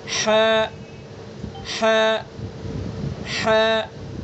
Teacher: وسط حلق، حلق کا درمیانی حصہ